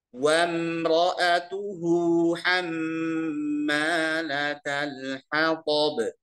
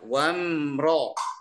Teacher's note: Wamro tebal, ya. Wamro, ro-nya tebal. Atuhu biasa.